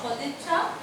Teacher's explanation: অঘোষ ত ধ্বনি দ ধ্বনিতে রূপান্তরিত হয়েছে। এই যে দ, সদিচ্ছা দ ধ্বনিতে রূপান্তরিত হয়েছে। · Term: ঘোষীভবন